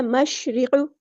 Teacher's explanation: شین ساکن کو ہم نے ہلانا نہیں ہے. را کی زیر کو ہم لمبا نہیں کریں گے اور را یہاں پہ باریک لائٹ پڑی جائے گی. مشرق، قاف ہمارے ہیوی ٹیرے پورا ادا کریں گے.